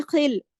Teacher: خواہ جو ہے خراش کے ساتھ موٹا کر کے